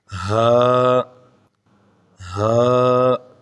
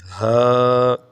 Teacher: ہا سینے سے ادا ہوگا